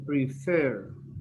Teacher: Remember, it's prefer. The stress is in the second E, prefer.